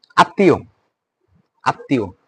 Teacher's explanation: উচ্চারণের ক্ষেত্রে আমার একটু নাক দিয়ে সাউন্ড হবে · ম ফলা উচ্চারিত হয় না। মাঝে বা শেষে দ্বিত্ব উচ্চারিত হয় এবং একটু আনুনাসিক হয়।